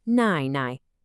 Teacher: Notice how the first part kind of dips down and then comes right back up and the second is nice and light.